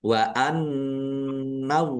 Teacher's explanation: nun tasdid dibaca ghunah atau mendengung ditahan. Wa anallaha allahnya dibaca tebal karena harakat di depannya fathah.